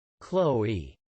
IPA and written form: klɔe (Chloé)